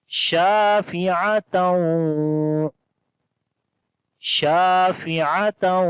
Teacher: شین کو لمبا کریں گے، الف مدہ ہے، فا اور عین کو لمبا نہیں کریں گے.